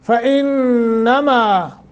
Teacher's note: نون مشدد ہے، غنہ کریں گے، ما ایک الف کے برابر مد ہے۔